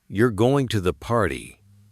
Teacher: with a flat tone, it's just a statement. But if you raise your voice at the end, "You're going to the party," it becomes a question.